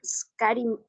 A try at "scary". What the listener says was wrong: You have to pronounce this adjective like scary, not scary, sino que scary. Siempre es un error que todos cometemos, que la S en las palabras en inglés las pronunciamos como es, como que tuvieran una es.